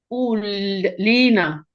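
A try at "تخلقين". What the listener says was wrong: तखलुकीना की और कफ लाम की जगह आ गया कफ। तखलुकीना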